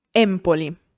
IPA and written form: ˈempoli (Empoli)